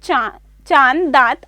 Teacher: अनुनासिक का उच्चारण नाक और मुंह से होता है और उच्चारण में लघुता रहती है।